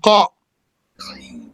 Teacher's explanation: Elevated letter, tongue is up, therefore has tafkhim, qa.